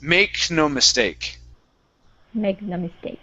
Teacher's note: it's very quick from that K into the N. It's like you're falling down from it.